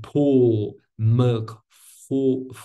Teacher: in these words the L is dark